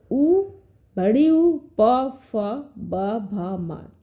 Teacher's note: अब उच्चारण स्थान ओष्ठ है